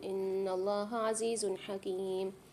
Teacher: عزیز حکیم میں دو پیش کی تنوین کے بعد حاری، یہاں بھی غنہ نہیں کریں گے، اظہار کر کے پڑھیں گے۔ قاعدے کا نام ہے اظہار حلقیہ، میرے ساتھ پڑھیے۔ · ان اللہ عزیز حکیم نون پر مشدد ہے، غنہ کر کے پڑھیں گے، اللہ کے لام کو موٹا کریں گے اور کھینچ کے پڑھیں گے۔